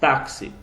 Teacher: x com som de KS